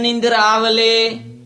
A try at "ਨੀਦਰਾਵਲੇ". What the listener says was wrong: ਨਿੰਦਰਾਵਲੇ ਨਹੀਂ ਬੋਲਣਾ ਨੀਦਰਾਵਲੇ ਬਿਹਾਰੀ ਲੱਗੀ ਹੋਈ ਹ